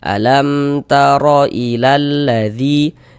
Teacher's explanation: Huruf mim sukunnya kita baca jelas, kemudian tidak didengungkan, jadi baca pendek saja. Alam taro ilal, jangan dibaca alam dipanjangkan begitu, jangan, pendek saja izhar syafawi.